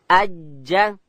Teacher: جیم ادا کیږي د ژبې منځ به لوړ تالو ته ورولو